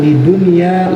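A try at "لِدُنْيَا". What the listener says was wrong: ya-nya mana ya-nya titik dua ya-nya mana titik dua kerengin dikit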